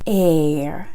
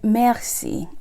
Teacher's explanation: Haitian R is air. It's softer.